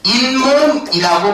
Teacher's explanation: 니은 소리가 덧나게 됐지. 그러니까 니은 소리가 첨가됐다라고 볼 수가 있겠지